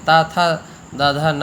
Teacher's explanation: ता था दा धा ना बोलने में जीभ दांतों से लगती है, जिह्वा का अग्रभाग दांतों से लगता है